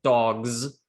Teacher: that's not really an S sound, it's a Z sound